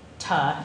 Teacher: voiceless targets would have a long voice onset time, a longer VOT